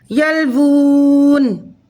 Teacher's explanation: ہم 3 الف کے برابر کھینچ کر پڑھیں گے وقف کی صورت میں، کیونکہ الٹے پیش کے بعد نون ساکن ہو رہا ہے وقف کی وجہ سے، تو یہاں 3 الف کے برابر ہم واو کو الٹے پیش کو کھینچ کر پڑھیں گے۔